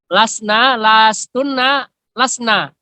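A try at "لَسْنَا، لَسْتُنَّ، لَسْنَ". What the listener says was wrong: Ya, bagus.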